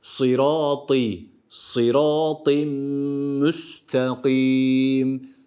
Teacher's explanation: ı i arası bir sesle tenvini gerçekleştiriyoruz ve Mime katıyoruz